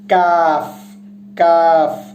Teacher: কাফটা উচ্চারিত হবে জিহ্বার শেষ ভাগের একটু আগে থেকে